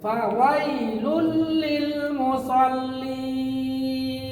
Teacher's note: লুল হয়ে যাবে মিলবে গুন্না ছাড়া ইদগামে বা গুন্না ছাড়া মিলাইয়া পড়া